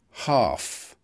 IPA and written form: hɑːf (half)